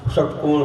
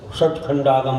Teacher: शंकर का सा बोलते ना अपन, शक्कर का, उसमें थोड़ी ऊपर लगेगी। और एक मूर्धन्य सा होता है, मूर्धन्य सा, उसमें जीभ पीछे लौट जाएगी